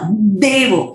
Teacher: यहाँ पे द जो है वो डबल द है लेकिन अल्प प्राण है, बहुत सारे लोग उसको देवो बोलते हैं, वो धे नहीं है, वो सिर्फ अल्प प्राण द है लेकिन डबल द है, तो वो देवो, वहां पे स्ट्रेस करना है, उसको द्वैतक्षरा बोलते हैं।